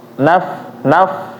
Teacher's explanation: Di ayat 5 ada huruf fa sukun atau huruf fa mati. Jangan dipantul.